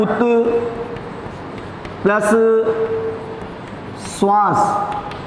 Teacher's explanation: त के बाद स आए तो त का च और स का छ। त के बाद स सल्जम वाला अगर आता है तो उस त का तो च और जो स है उसका छ छतरी वाला हो जाता है।